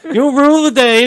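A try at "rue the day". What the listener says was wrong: Rue. Rue. Not rule.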